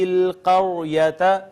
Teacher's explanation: را کا ما قبل مفتوح ہے، خود ساکن ہے را، یہاں را کو مفخم یعنی پر کر کے پڑھیں گے